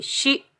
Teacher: شین کی آواز پھیلتی ہوئی محسوس ہوتی ہے، شین کے نیچے زیر، شین کو ہم حمزہ ساکن کے ساتھ ملائیں گے۔